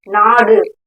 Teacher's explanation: சோ இந்த குறில் வந்து அதோட மாத்திரை அளவுல இருந்து குறுகி ஒலிக்குது ஏன்னா இங்க நெடில் எழுத்து நா ங்குறதுதான் வந்து அதிகமா ஒலிக்குது டு ங்குறது குறுகி ஒலிக்குது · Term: குற்றியல் உகரம்